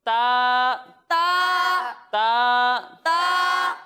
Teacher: ता हुरूफ मुस्तालिया में से नहीं है तो इसे हम बारीक पढ़ेंगे